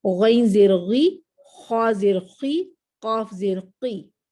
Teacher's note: اس میں 2 درجے کی تفخیم اور 1 درجے کی، دونوں ہیوی لیٹرز ہیں، مگر یہ صاد، ضاد، طا، ظا آلویز ہیوی ہیں، اور غین، خا اور قاف ہیوی ہیں، مگر جب کسرہ کے ساتھ یا زیر کے ساتھ آتے ہیں تو تھوڑے سے ہیوی رہتے ہیں، مگر تھوڑے سے لائٹ، تھوڑے سے اس سے کم درجہ ہو جاتا ہے، بس یہ آپ کہہ سکتے ہیں۔